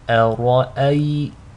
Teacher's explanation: the ra is heavy, again because it's maftuh, takes a fatha, but is flanked by 2 hamzas, both of which are light. So to recite this correctly, make sure the hamza is light, the ra is heavy, and the second hamza is light.